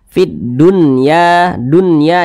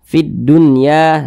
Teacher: cara bacanya itu jelas tidak berdengung jadi baca pendek saja Fid Dunya Dunya Jangan dibaca Dunya jangan dipanjangkan seperti itu pendek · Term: izhar mutlak